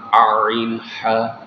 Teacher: 1 নম্বর মাখরাজ হামজা হা। 2 নম্বর মাখরাজ কণ্ঠনালীর মধ্যখান থেকে 2টি হরফ উচ্চারিত হয়